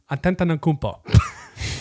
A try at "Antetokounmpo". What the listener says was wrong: You're putting like another like syllable in there. It's not Antetokounmpo. Antetokounmpo.